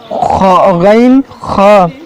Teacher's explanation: غین خا حلق کے اوپر والے حصے سے ادا ہوتے ہیں